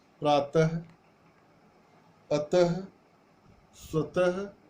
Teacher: इसके अलावा आता है विसर्ग। विसर्ग इस ध्वनि का उच्चारण ह के समान होता है।